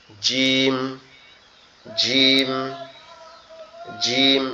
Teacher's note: কিন্তু এই জিমের আওয়াজটা একটু কঠিন হবে কেমন? দুই দাঁতের পাটি একসাথে চেপে লেগে থাকবে। জিম জিম জিম এরকম একটু শক্ত আওয়াজে পড়তে হবে।